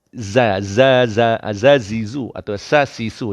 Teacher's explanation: Lidah tak perlu terkeluarkan dia, mendatar saja.